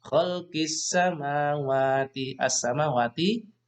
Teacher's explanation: Khalqis samawati, as-samawati, bacaan alif lam samsiah, ada alif lam berhadapan dengan sin. Alif lam bertemu dengan sin, maka alif lamnya tidak terbaca, yang terbaca suara huruf sinnya ya.